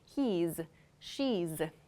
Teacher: has or she has is reduced to he's she's so there's this z sound that happens here